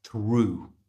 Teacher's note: In this case, O-U-G-H is simply pronounced oo. So push your lips forward to get a good oo sound